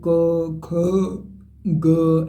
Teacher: कंठ और निचली जीभ के स्पर्श बोले जाने वाले जो वर्ण है वो कंठ के अंतर्गत आते हैं · कंठ और निचली जीभ के स्पर्श से बोले जाने वाले वर्ण, यानी जब आप कंठ जो होगा ना, कंठ वर्ग के अंतर्गत जो जो आएंगे, जैसे क ख ग, ऐसे जब आप बोलेंगे तो उनको बोलने के दौरान आपको कंठ का प्रयोग होगा और निचली जीभ के स्पर्श से बोले जाते हैं।